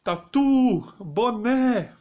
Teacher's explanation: vocês vem que as últimas sílabas são tônicas logo elas são oxítonas